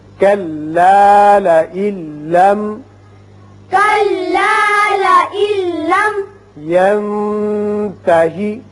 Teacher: یہاں ادغام بغیر غنہ ہوگا اور میم پر اظہار ہوگا